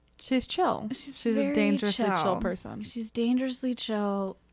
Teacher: i love this vocal fry i'm gonna get from this character